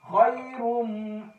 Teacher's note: یا سے پہلے زبر آ رہی ہے، یا لین تھوڑا سا لمبا کھینچ کر پڑھیں گے